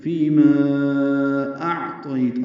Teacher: اب یہاں میں مدہ اصلی کے بعد حمزہ ہے تو فیما اعطیت، اب لمبا کریں گے. ما کو چار حرکات، حمزہ کو عین سے ملانا ہے، عین وسط حلق سے ادا کرنا ہے. طیت، یہ طاپر ہے، اور یا لین تا پہ وقف کر دیں گے، ہمس ہوگا.